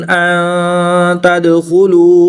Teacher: नून साकिन के बाद ता हरूफ इख्फा में से है तो यहाँ पर इख्फा होगा यानी गुन्ना ज़मानी करके पढ़ेंगे